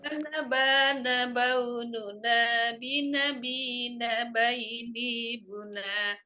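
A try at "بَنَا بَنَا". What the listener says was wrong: Masih di sini Bu. Harus dilancarkan ya. Awalnya sudah oke. Sudah oke, cuman pas turunnya tuh ya, pas turunnya.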